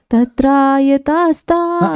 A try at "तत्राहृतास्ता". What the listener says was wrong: या नहीं, तत्राहृतास्ता, हृत, हाँ बोलिए।